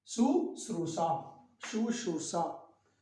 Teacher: हमें यहाँ दंत स के बजाय तालव्य स लगाना है।